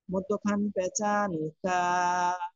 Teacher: 5 নম্বর মাখরাজ, জিহ্বার গোড়া থেকে একটু আগে বাড়াইয়া, তারপর আবার উপরে তালুর সঙ্গে লাগাইয়া,